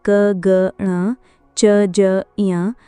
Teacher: अल्पप्राण व्यंजन वे होते हैं जिनके उच्चारण में मुख से कम हवा निकलती है।